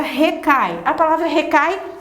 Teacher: A palavra recai, a professora nem vai fazer aqui no quadro, porque você já começou a pegar o desafio. O recai, o A é maior, o I é menor. Então, nesse caso, você tem um ditongo decrescente, não tem nasalização oral.